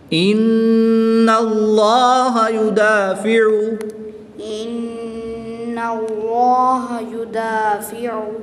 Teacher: بیٹے نون مشدد میں ہمیشہ غنہ ہوتا ہے